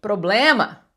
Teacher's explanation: Porque em português, problema, o blem é a mais forte, problema. Mas eu falo eu falo ble e falo ma com clareza, silabicamente ouvido.